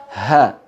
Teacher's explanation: ha letaknya sama dengan hamzah di pangkal tenggorokan, ya, dia juga di pita suara tapi tidak digetarkan sambil menutup pita suara, hanya digetarkan saja sambil menghembuskan udara. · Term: huruf ha